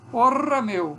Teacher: Essa vibrante alveolar, uma vibrante múltipla alveolar.